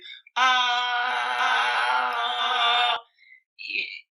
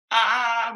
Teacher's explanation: O for example the lips go forward so ah and then I just change my throat to be more narrow and then more open